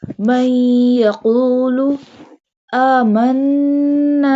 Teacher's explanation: Alif has a standing fatha sign. So we stretch it up to 2 harkat or up to 2 alif.